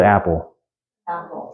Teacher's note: you notice a little catch in your throat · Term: glottal stop